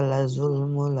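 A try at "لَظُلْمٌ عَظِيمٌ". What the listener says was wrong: লাযুলমুল না, লাযুলমুন, মিমের তানবিন মুন। লাযুলমুন আযীম।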